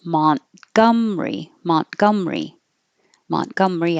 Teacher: you can drop the ER and push it together Mont and don't say the T